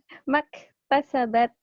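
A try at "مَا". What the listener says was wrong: Ini kan matobi'i. Ma. Ini kan matobi'i. Panjang satu alif. Ma. Kok bacanya gitu? Matobi'i. Tidak dibaca panjang.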